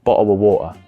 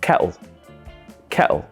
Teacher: becomes bottle of water the teas almost are half pronounced so you go to say them but you kind of stop them in your throat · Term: glottal stop, glottal stop T's